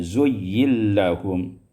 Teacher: Pada ayat 37 zuyyina lahum idgham nun fil lam, diidghamkan nun pada lam